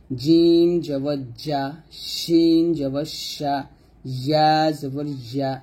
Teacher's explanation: জিহ্বার মধ্যখান তার বরাবর উপরের তালুর সঙ্গে লাগবে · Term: জিম শিন ইয়া